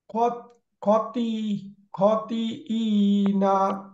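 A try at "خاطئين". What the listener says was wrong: খতে আলিফ আছে, খতে আলিফ আছে।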